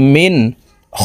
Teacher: ওয়ামানাহুম মিম নুন জের মিন, নুন সাকিনের পরে ইজহারের হরফ খ আসছে, এই কারণে এই নুন সাকিনকে গুন্না সারা স্পষ্ট করিয়া পড়ব